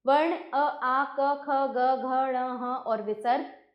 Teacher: इसका उच्चारण स्थान कंठ है।